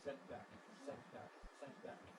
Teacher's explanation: If you can say sent back, sent with a glottal stop, that's an absolutely acceptable way of pronouncing it.